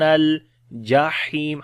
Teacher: ہاں کو گلے کے درمیان والے حصے سے اور لمبا بھی کریں گے، یا مدہ ہے، جب رکیں گے مد عارض ہو جائے گی.